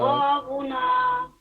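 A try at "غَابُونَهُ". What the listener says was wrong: देखिए क्या है ये हिज्जे कीजिए तो इसको। खींचते हैं ना उल्टा पेश को, खींचते हैं ना गाबूना। गाबूना।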